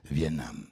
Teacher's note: dans Vietnam, on étrangle le T.